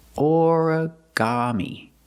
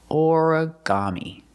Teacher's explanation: Put the stress on the first syllable and the third syllable.